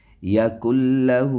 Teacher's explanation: یا کلہ ہا کے اوپر الٹا پیش ہے اور یہ ایک الف کے برابر کھینچنا ہوتا ہے